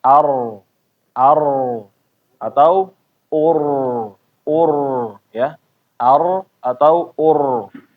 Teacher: Kalau sebelumnya fathah atau damah a atau u misalnya ar atau ur ya ar atau ur getarannya tetap ada jangan sampai hilang tapi dijaga jangan terlalu banyak kayak mengucapkan r Indonesia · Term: tafkhim